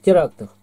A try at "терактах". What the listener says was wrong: Ах ты, ну, никак ты ясно не произносишь окончание.